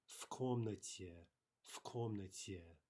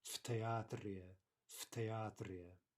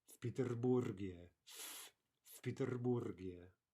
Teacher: We've got a v colliding with an unvoiced consonant ka, and so we say в комнате, в комнате. Right, we have the assimilation of the first consonant in the cluster to the second consonant